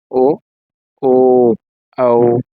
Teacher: ಕಂಠ ಮತ್ತು ತುಟಿಯ ಸಹಾಯದಿಂದ ಉಚ್ಚರಿಸತಕಂತ ಅಕ್ಷರಗಳು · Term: ಕಂಟೋಷ್ಟ್ಯ